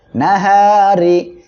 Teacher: র জেরি নাহারি আমরা এখানে যদি ওয়াকফ করি তাহলে কি হবে র অক্ষরটা সাকিন হয়ে যাবে আর তার ডাইনে জবর থাকায় এখানে মোটা করে পড়বো